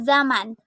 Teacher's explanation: Bunyi Z dengan ciri-ciri hidup, oral, apikoalveolar, frikatif dengan contoh kata zaman.